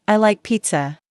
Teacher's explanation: Let your voice fall gently at the end.